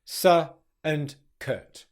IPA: sə and kət